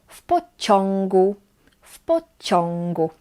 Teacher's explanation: before g we pronounce it as on. So it's like on, but our tongue, it's like in this position. So the back of your tongue is up.